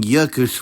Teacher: the accusative simply drops the second L, becoming jökul without the [t͡ɬ]